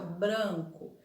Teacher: A palavra branco, o A é mais fechado